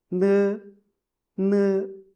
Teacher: Your upper teeth touch your tongue tip and the sound comes from your nasal ca cavity.